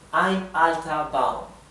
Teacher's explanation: la R final del alemán suena más parecido a una A